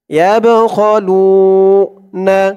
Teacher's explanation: বাটা কলকলার হরফ ধাক্কা দিয়ে পড়তে হবে